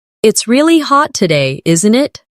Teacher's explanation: Notice how isn't it can sound like in it in very casual British English.